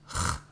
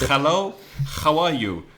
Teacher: Spanish speakers, when there's a word with H at the beginning, for example, hello, they tend to say the sound from the throat